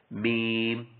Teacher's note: دونوں ہونٹوں کے خشک حصے سے ادا ہوتا ہے